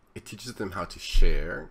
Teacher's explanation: there's a slight rise in her intonation